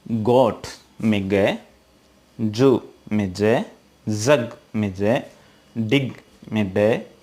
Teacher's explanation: हमारे vocal cords में गले में एक प्रकार का वाइब्रेशन होता है जब भी हम उनको प्रोनाउंस करते हैं. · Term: वॉइस्ड साउंड